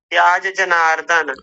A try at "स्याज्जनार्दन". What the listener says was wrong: स्याज नहीं स्याज वो आधा है तो बहुत थोड़ा सा उच्चारण आएगा